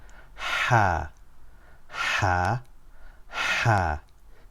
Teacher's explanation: this sound is not found in English it comes from the middle of the throat and is a very sharp sound